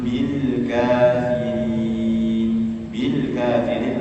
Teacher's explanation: Lam sukun disempurnakan sifatnya ya. Dia punya sifat tawassud atau bainiah. Tidak berhenti, tidak juga mengalir.